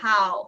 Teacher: the vowel in how is a little bit more open usually I mean of course it also depends on the accent but